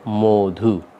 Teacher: এই প্রথমকার অন্তর্নিহিত অ এর উচ্চারণ ও এর মতো হয়ে যাবে। এই কারণে এখানে উচ্চারণ করা হচ্ছে মধু।